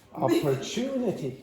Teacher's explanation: So, you have the secondary stress again, you have the secondary stress on the first syllable, and then you have the primary stress on the third syllable.